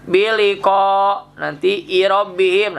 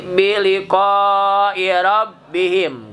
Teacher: Mad panjang wajib harus muttasil, disambung antara ko dengan i, wajib disambung. Tidak boleh berhenti di ko. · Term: mad wajib muttasil